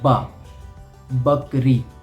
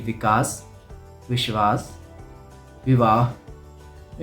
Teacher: ऐसे ही कुछ होता है बा और और वा बोलने में जब हम बकरी का बा बोलते हैं तो हमारे जो लिप्स है वो आपस में जुड़ जाते हैं जैसे कि बा बकरी और जब हम वद क वाला वा · जब आपको बा बोलना हो तो आपके होंठ आपस में जुड़ेंगे और जब आपको वाह बोलना हो तब आपके होंठ आपस में नहीं जुड़ेंगे